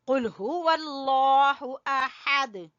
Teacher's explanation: قل ہو، ہا گلے کے آخری حصے سے، واللہ لفظ اللہ کو موٹا پڑھیں گے، اور احد آ کو چھوٹا اور ہا کو گلے کے درمیان سے اور دال کے اوپر قلقلہ کریں گے